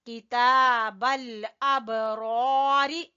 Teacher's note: با کے اوپر قلقلہ اور را کو پر پڑیں گے